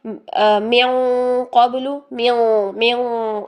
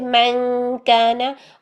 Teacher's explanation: जब नून साकिन तनवीन के बाद हर्फ मोटा आ जाएगा ना तो इख्फा भी मोटा हो जाएगा, उसकी आवाज़ भी मोटी हो जाएगी। ये काफ बारीक था, हम कर रहे थे मन काना, और ये कौफ मोटा है तो हम करेंगे मिन क़ब्लु, मिन मिन, ये कौफ के पास चले गए हम पहले, और फिर नून की आवाज़ को छुपाया, मिन क़ब्लु, ठीक है।